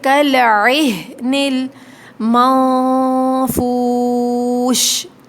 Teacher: والی ہا ہوتی ہے وہ حلق سے ادا ہوتی ہے، اور یہ والی جو ہا ہوتی ہے یہ سینے کی طرف سے ادا ہوتی ہے